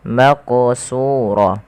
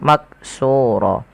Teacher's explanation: Qalqalah artinya yaitu memantul. Sehingga huruf qaf ini wajib dipantulkan ketika dia berharakat sukun